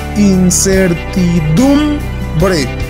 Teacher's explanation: Se nota que se hace más fuerza en la voz al pronunciar la sílaba dum. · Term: acento